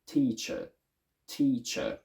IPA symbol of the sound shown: ə